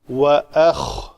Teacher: حمزہ پتلا اور خا موٹا